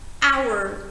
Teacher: بدونید تو این کلمه h قرار نیست تلفظ بشه